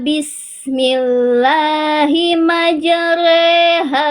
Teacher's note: imalah itu artinya dibacanya antara fathah dan kasroh. Jadinya tengah-tengahnya e, kayak e.